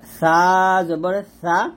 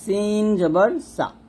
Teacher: তারপর হচ্ছে সা এবং হচ্ছে সিন, এই দুটো হরফের মধ্যে বিশাল পার্থক্য আছে। সেটা হচ্ছে সাটা আমরা জিহ্বার আগা উপরে দাঁতের আগার সঙ্গে লাগাবো, পাতলা করে উচ্চারণ করবো। আর সিনটা জিহ্বাটা নিচে দাঁতের মাঝে লাগবে, নিচে দাঁতের মাঝখানে লাগবে।